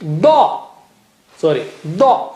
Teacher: Da is very thick and high. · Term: Dad